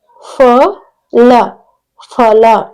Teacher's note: ಇವುಗಳನ್ನ ಉಚ್ಚರಿಸುವಾಗ ಹೊಟ್ಟೆಯ ಭಾಗದಿಂದ ಹೆಚ್ಚಿನ ಗಾಳಿಯನ್ನ ಹೊರ ಹಾಕುವುದರ ಮೂಲಕ ಉಚ್ಚಾರ ಮಾಡುತ್ತಾರೆ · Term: ಮಹಾಪ್ರಾಣ ಅಕ್ಷರಗಳು